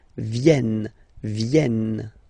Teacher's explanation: Ils viennent, so remember this classic ending ENT for the third person of the plural is here, but phonetically it doesn't exist, so you don't pronounce it. Viennent, viennent, okay?